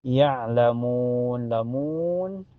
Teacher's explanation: ini ain sukun mutlak ya kayak tercekik ya